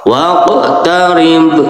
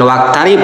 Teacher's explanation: Jangan wakarib tapi waq beda. Ada qof, ada kaf gitu. Kalau kaf di luar, kalau qof di jero